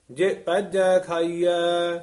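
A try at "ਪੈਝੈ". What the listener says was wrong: ਇਹ ਪੈਜੈ ਜੱਜਾ ਨਹੀਂ ਬੋਲਣਾ, ਝੱਜਾ ਹੈ। ਪੈਜੈ ਇਸ ਤਰ੍ਹਾਂ ਉਚਾਰਨ ਕਰਨਾ ਹੈ।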